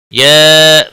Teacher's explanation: یا مد منفصل ہے، 3 الف کے برابر کھینچ کر پڑھیں گے۔